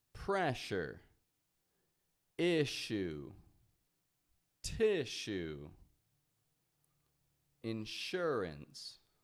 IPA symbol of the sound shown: ʃ